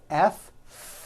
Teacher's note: the f sound where you're biting down on your lower lip